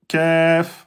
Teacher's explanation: le Kef, il est plus en avant au contact du palais mou et dur. Kef, c'est le K français. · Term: lettre Kef